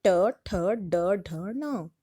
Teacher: ट वर्ग मूर्धा, जीभ मुड़ जाती है इसमें